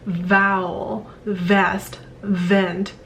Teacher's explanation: your teeth upper teeth and lower lip are blocking the air as well so the air can only be released through that tiny slit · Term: labial dental v sound